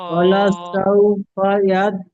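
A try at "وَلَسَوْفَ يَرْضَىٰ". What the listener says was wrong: ইয়াদ বলছেন, ইয়াদ হবে না, ইয়ারো, ইয়ার জবর ইয়ারো।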